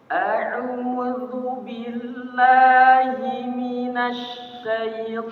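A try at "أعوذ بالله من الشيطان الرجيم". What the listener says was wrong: Nah, syai-nya bukan Sat, iya-nya. Syai. Nah, ulangi.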